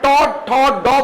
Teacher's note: आपके मूर्धा में क्या होगा? पहले अवरोध पैदा होगा